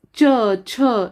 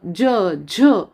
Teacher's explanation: त्यापैकी च आणि छ हे अघोष वर्ण आहेत, जेव्हा ज आणि झ हे घोष वर्ण आहेत